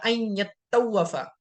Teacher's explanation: تو یہ طواف ان یطوف استعمال کیا گیا ہے، لفظ اصلاً جو ہے یہ اس میں ادغام ہے تا کا، ان یتطوف تھا، ٹھیک ہے۔ تو اس کی جو تا تھی 2 نقطے والی تا کو تو کے اندر ادغام کر دیا ہے، تو اسی لیے تو پر تشدید آ گئی، ٹھیک ہے۔ تو یہ بن گیا ان یتوف، ٹھیک ہے۔